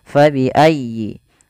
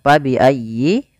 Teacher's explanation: ya teman-teman Bagi yang belum kita ulang sedikit fabiayyi di sini Fa harus dialirkan jangan sampai diganti dengan P jangan diganti dengan pabiayyi ahah jangan tapi kemudian dia bacanya